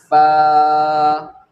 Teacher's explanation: उसके बाद में आता है फ़ा, अब फ़ा जो है सामने के दांतों का किनारा जब नीचे के होठ पर लगता है तो फ़ा अदा होता है, इस तरह से आप देख सकते हैं फ़ा, यानी सामने के दांतों का किनारा, सामने के जो दांत होते हैं हमारे उसका किनारा जब नीचे के होठ पर लगता है तो फ़ा अदा होता है, फ़ा ये वाला हिस्सा जब नीचे पर लगेगा।